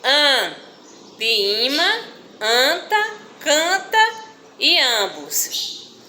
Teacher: A corrente de ar vibrante passa ao mesmo tempo pelas cavidades bucal e nasal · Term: vogais nasais